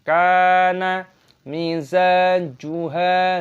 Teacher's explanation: Huruf za dibaca panjang, ada tanda alif (mad) thabi'i, panjangkan dua hitungan.